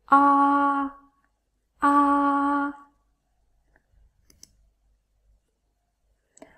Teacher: It's like ah in the English word father, but the tongue position is a little bit higher than ah in father.